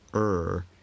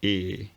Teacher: you don't have to move your tongue much to go from er to e